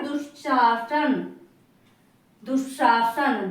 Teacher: निश्चिंत हो गया दुशासन हो गया दोनों में विसर्ग का आधा तालव्य सा बन रहा है